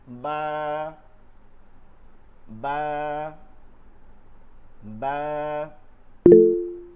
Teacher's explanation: দুই ঠোঁট থেকে, দুই ঠোঁটের ভিজা জায়গাটা থেকে নরম করে